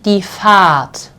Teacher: So in this case here, in this word, this sounds like a very much prolonged A